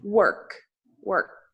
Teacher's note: O som do K no final, você produz com ar. Você não tem vibração. Se você tem vibração, você está falando errado.